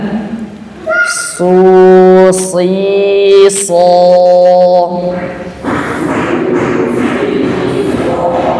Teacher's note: ketika mengucapkan huruf shad, dia harus tebal. Mau dhammah, mau kasrah, mau fathah, dia tebal. Pangkal dia naik, tengah lidah juga naik.